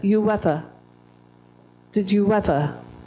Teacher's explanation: I've joined two vowels together we find it hard to say two vowels together so I've inserted a consonant